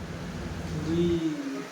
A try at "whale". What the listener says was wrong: Yes, whale. Ano mo yung, i-express mo yung A. Ganon. Whale. Pag marami siyang silent sa dulo, kailangan yung long sound, natin. So, long sound ng A, whale.